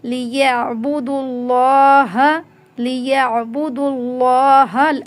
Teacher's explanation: لفظ اللہ کو موٹا پڑھنا ہے۔ یہ میں آپ کو بتایا تھا کہ اگر اللہ کے لام سے پہلے پیش یا زبر آ جائے تو اس میں لفظ اللہ کو موٹا پڑھا جاتا ہے۔